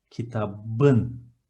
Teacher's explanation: Kitap, book, but I want to write o the book, so it should be kitapın. But P, the last consonant of the word kitap, is an explosive consonant, so it's going to alternate itself to kitabın.